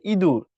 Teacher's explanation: ইঁদুরের ইটা দেখো মুখের সামনে উচ্চারিত হয়। উচ্চ, এটা উঁচুতে উচ্চারিত হয়, নিচে না। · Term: সম্মুখ